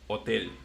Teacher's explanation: we just don't pronounce the H in Spanish